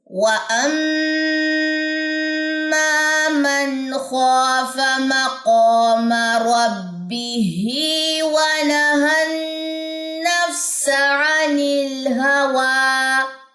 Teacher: میم مشدد کا غننے کے بعد آپ اس کی زبر لمبی جو ہے وہ کریں گے